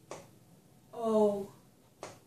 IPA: oʊ